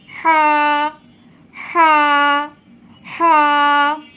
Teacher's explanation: হাটা আপনারা গলার ঠিক মাঝখান থেকে উচ্চারিত হবে। গলার মাঝখানে একটা আঙ্গুল দিয়ে সামান্য একটু চাপ দিয়ে আপনারা হাটা উচ্চারণ করবেন।